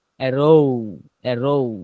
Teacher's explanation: শেষের উচ্চারণটা মানে ও এর দিকে ঠেলে চলে যাব